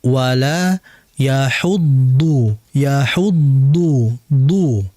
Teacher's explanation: huruf dhad itu lidah samping yang ditempelkan oleh gigi geraham atas